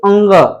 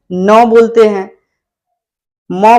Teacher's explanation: अंग बोलते हैं तो नाक पे भी जोर पड़ता है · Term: नासिक के वर्ण